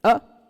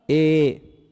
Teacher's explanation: जितना समय हम अ बोलने में लगा सकते हैं उतने कम समय में हम ए नहीं बोल सकते। इसका 2 गुना समय लगेगा इसमें।